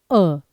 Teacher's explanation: मध्य स्वर केवल एक है अ। जो कि जीभ में बीच में से तालु से बोला जाता है